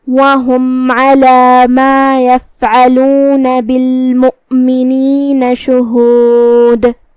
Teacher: کلمت علی ہم عین کو حلق کے درمیان والے حصے سے ادا کریں گے. کلمت شہود میں آخری میں ہم دال پہ رکیں گے تو اس پہ جزم سے رکیں گے، لہذا یہاں دال کا حکم ہے قلقلہ